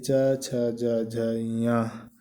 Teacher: तालव्य व्यंजन, जिन वर्णों का उच्चारण करने पर जीभ का मध्य भाग तालु को स्पर्श करता है उन्हें तालव्य व्यंजन या स्पर्श संघर्षी व्यंजन कहा जाता है।